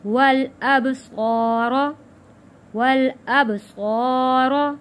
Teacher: با پہ کلکلہ ادا کیا ہے، صاد موٹا پڑے جانے والا لفظ ہے اور الف سے پہلے زبر ہے، حروف مدہ ہے، تو ایک الف کے برابر صا کھینچ کر پڑھیں گے۔